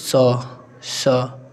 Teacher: अघोष होते हैं यानी कि इनको बोलने पर कंप नहीं होता है और साथ ही साथ महाप्राण यानी कि बोलने पर हवा ज्यादा निकलती है